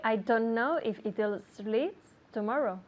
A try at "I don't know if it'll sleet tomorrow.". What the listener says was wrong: Okay, good, but you're not saying the T. I don't.